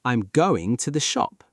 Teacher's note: In British English, when you make a statement, your voice generally starts higher and falls at the end. · Your voice falls on shop.